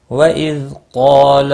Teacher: قاف اور الف دونوں پور پڑے جائیں گے۔ قاف مستعلیہ ہے اور اس کے ساتھ میں الف بھی ہے ایک ہی کلمے میں، تو یہ بھی پور پڑا جائے گا، عارضی پور الف بھی ہے۔